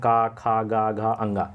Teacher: क वर्ग के सभी जो आपके होते हैं क ख ग घ अंग इनके सभी के उच्चारण स्थान जो है कंठ से होते हैं